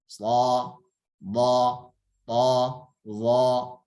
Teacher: Adapun idbaq dia terkumpul dulu. Ya. Ngumpul dulu di antara lidah dan langit sehingga tebal bunyinya.